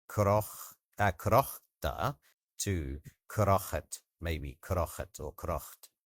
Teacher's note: often the final vowel sound gets deleted in Perthshire and a little vowel will be put in between